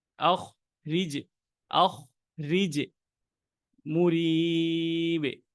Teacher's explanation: রতে আছে এখানে জের, আমরা এখানে করে ফেলবো রটাকে বারিক।